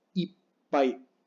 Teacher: La doble P es como una pausa